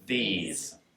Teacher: when we say these, there's a really good Z on the end